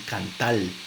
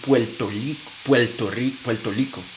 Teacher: En vez de decir Puerto Rico, dicen Puerto Lico. Entonces, realizan la R como si fuera L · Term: español caribeño